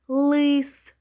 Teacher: в цьому слові л виступає вже як твердий приголосний не м'який тому ми його позначаємо фішечкою з однією рисочкою и голосна червона